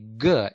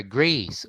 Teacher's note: we make a complete blockage to the airstream coming out to our lungs by pressing the back part of our tongue against the v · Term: stops or plosives